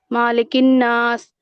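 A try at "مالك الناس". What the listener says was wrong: क्यों खींच रही है आप भी? क्यों खींच रही है अभी वो? देखिए, अगर हम मालिक कहे, दोनों में मीनिंग में इतना ज्यादा बदल यहाँ पे है नहीं, चेंजेस, ठीक है।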